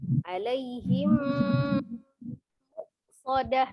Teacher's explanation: Jadi hanya satu hurufnya mim sukun ketemu dengan huruf mim, idgham mimi. Diidghamkan berarti dileburkan ke huruf mim yang kedua ya. Disertai dengan dengungnya.